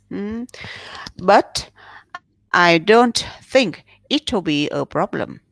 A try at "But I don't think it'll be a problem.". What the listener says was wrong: Yeah, much better.